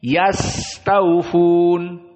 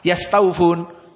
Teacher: yas sin di sini sifatnya adalah rakhawah, sehingga harus ada jenjang waktu.